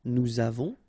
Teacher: final S not pronounced, and then we make this little link between the two